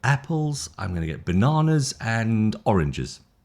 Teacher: Did you see the rise rise fall? So, it lips up, lips up, and lips down.